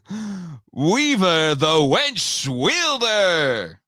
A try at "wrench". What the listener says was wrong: It's wrench. Wrench. You said winch.